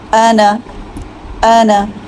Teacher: ہم اس الف کو نہیں پڑھیں گے، ہم صرف نون کی زبر کو پڑھیں گے۔